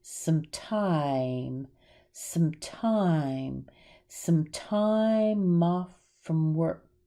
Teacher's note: Some gets reduced and sounds like sm, sm.